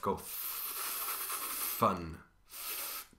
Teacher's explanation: Put your hands on your throat and say fun, but stay on the F. Go fun. Do you feel anything at your throat? You shouldn't. If you were to compare that with van, for example, and you stay on the V, your hand should feel your buzzing in your throat.